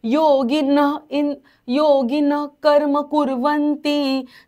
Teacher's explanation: योगीन नंतरचा जो विसर्ग आहे तो अर्धा बोलायचा कारण पुढे क आहे क ख प आणि फ असेल तर तो विसर्ग आपला अर्धा